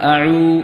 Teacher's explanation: അഊദു പറയുന്ന സമയത്ത് ഐൻ എന്ന് പറയുന്നത് മലയാളത്തിൽ തീരെ ഇല്ലാത്തതാണ്. തൊണ്ടയുടെ നടുവിൽ നിന്ന് ശബ്ദത്തോടുകൂടി നേർപ്പിച്ച് പറയേണ്ടതാണ്.